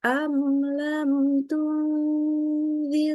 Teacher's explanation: Mimnya kita baca idhar jelas tanpa ada tambahan gunnah juga. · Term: idhar syafawi